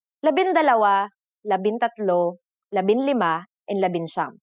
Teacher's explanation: However, NG sometimes changes its form depending on the letter that follows it. For the letters D, L, R, S, and T, the G from NG is dropped to make it easier to pronounce.